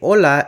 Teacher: standalone H is typically pronounced as ha, while in most Spanish dialects it's always silent, so they say hola and not hola for hello.